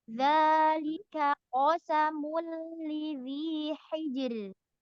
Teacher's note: Bedakan antara kaf dengan qaf. Yang kaf tipiskan, yang qaf isti'lakan, tebalkan. Za tafkhimkan.